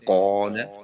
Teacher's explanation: الف سے پہلے موٹا حرف آئے تو الف کو بھی موٹا پڑھتے ہیں